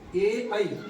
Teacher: ए ऐ म्हणजे गळ्यातून पण आणि टाळूला पण जीभ लागली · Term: कंठ पण आणि तालू